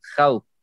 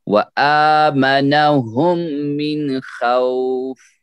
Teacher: خوف واو یہاں جو ہے خو خو ہے نرم آواز کے ساتھ، واو لین یہاں پہ آ گیا